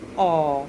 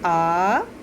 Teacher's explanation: तो औ को बोलने में जितना समय हमने लगाया, ठीक उसका दुगना समय हमने आ बोलने में लगाया।